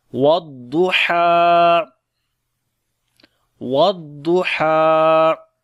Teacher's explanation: والضحیٰ، والضحیٰ، ضاد کو موٹا پڑھیں گے، حروف استعلاء میں سے ہے، اور ہا کو گلے کے درمیان والے حصے سے پڑھیں گے اور لمبا بھی کریں گے · ضاد کو موٹا پڑھیں گے، حروف استعلاء میں سے ہے، اور ہا کو گلے کے درمیان والے حصے سے پڑھیں گے اور لمبا بھی کریں گے، کھڑی زبر ہے۔